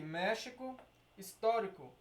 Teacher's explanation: três sílabas a antepenúltima é a sílaba tônica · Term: proparoxítona